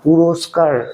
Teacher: ক্ষেত্রেও শেষে কোন অ আসছে না পুরস্কার এ র এখানে কিন্তু র এর উচ্চারণ শেষ র এর সঙ্গে কিন্তু অ আসছে না